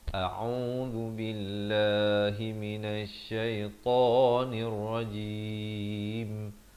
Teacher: Hamzah di pangkal kerongkong, ain di pertengahan kerongkong, 2 harakat, zal di hujung lidah, lafz jalalah dibaca nipis 2 harakat, ya, ta 2 harakat di sini, dan jim di akhir baru rapat mulut.